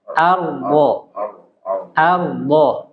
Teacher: di sini huruf ro tebal.